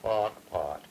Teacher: Kepke, because they illustrate what I'm after in this case, namely, very little, if any, R coloring